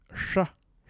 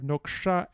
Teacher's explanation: the retroflex sh fricative. And we have noksha and sha.